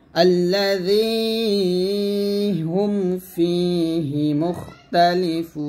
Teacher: আবার الذي هم فيه مختلفون আবার একসাথে الذي এখানে জি বলবেন না, জি বলবেন। এই জালের জিহ্বাটা উপর দাঁতের আগার সঙ্গে লাগিয়ে পাতলা উচ্চারণ করবেন।